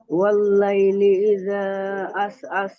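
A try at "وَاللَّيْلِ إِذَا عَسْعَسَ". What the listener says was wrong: হুম, আইন একটু আহ আহ কণ্ঠনালীর মাঝখান থেকে উচ্চারণ হবে। আ, আস, আস, হামজার মতো উচ্চারণ যেন না হয়ে যায়, বুঝতে পারছেন? হ্যাঁ হ্যাঁ, দুটোই একই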